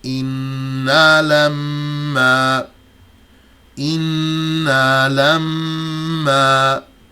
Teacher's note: The first is the noon and the meme with a shadda. The doubled noon and the doubled meme. They always have an outstanding ghunnah